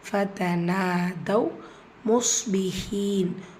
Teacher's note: இந்த இடத்துல ரெண்டுமே ஃபத்ஹா. ஃபதனா நூன்ல அலிஃப் மத்தா 2 ஹரக்கத்தில் நீட்டம் கொடுக்கணும்.